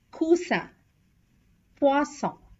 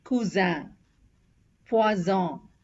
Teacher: 2S has the S sound, and 1S has the Z sound